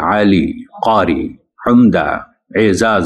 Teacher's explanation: वो उर्दू बोलते हुए आइन और काफ इतना गाढ़ा करके निकालते हैं कि अच्छा महसूस नहीं होता